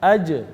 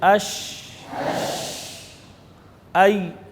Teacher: اب یہ جو زبان کا درمیان ہے، یہ اوپر سے جا کر اس سے لگے گا، جیم کے اندر تو چپک جائے گا، لیکن شین، یا میں صرف اٹھے گا، چپکے گا نہیں۔